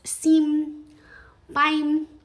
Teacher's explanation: When we see an M at the end, we expect this hard mm sound, but what we hear is more of this nasal resonance. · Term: nasal vowels